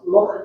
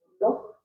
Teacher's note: it's a, throaty H. yeah, it's called a glottal fricative.